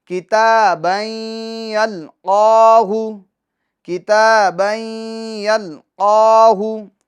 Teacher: یلقاہ قاف حروف مستعلیہ میں سے ہیں، اس کو ہم پور پڑھیں گے، اور قاف پر یہ کھڑی حرکات ہیں تو اس کو ایک الف کی مقدار ہم کھینچیں گے۔